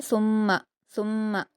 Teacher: मीम मुशद्द है गु्ना करना है और मीम को नहीं खींचेंगे